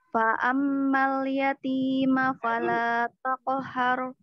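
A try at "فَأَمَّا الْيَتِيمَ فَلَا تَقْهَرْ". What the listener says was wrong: Mim tasdidnya jangan lupa, jangan ketinggalan. Mim tasdidnya dijaga dulu, jangan buru-buru.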